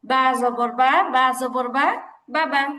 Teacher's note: আর বায়ের উচ্চারণটা বাবা আমাদের কোত্থেকে আসছে? যে দুই ঠোঁটের ভিজা অংশ থেকে বা এই উচ্চারণ